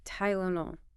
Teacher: So it's Tylunol. Notice the schwa in the unstressed second syllable.